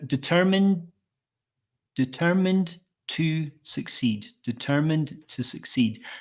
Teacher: we can smooth that by softening that D sound at the end of determined